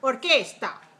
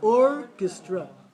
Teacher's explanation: We have or for the first syllable. And the second and the third one, make them weak.